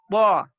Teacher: jangan sampai dia keluar angin. Harus tidak keluar angin.